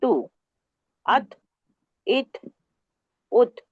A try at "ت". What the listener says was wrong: बेटा आप वक्त नहीं दे रहे आप, यू टू फास्ट।